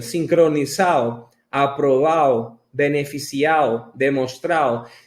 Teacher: Se come las letras D que estão entre vocales.